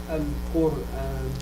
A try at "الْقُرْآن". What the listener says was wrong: لا الراء better than that.